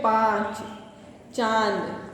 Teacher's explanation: अनुनासिक का जो उच्चारण करते हैं हम वो गले और नाक दोनों से किया जाता है